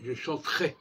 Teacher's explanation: le ER de l'infinitif, chanter, le E disparaît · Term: chevat suffixal